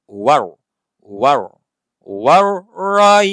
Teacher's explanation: Jadi ada tebal dekat ra ni. Sebab apa? Huruf sebelumnya baris atas.